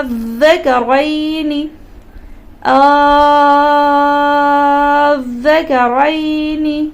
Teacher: حروف مدہ کے بعد سکون اصلی تشدید آ گئی، لہٰذا مد لازم ہو گئی. 6 سیکنڈ تک کھینچ کر کے پڑھی.